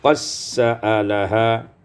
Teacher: Pada ayat yang ke-102, qad sa'alaha idgham dal fi sin, diidghamkan dal pada sin menjadi qassa'alaha